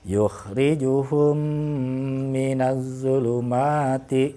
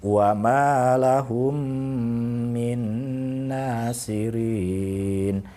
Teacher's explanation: bibir kita itu dirapatkan, ditekan begitu ya, membunyikannya, kemudian suaranya dimasukkan ke dalam rongga hidung dan ditahan 2-3 ketukan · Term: idgham mutamatsilain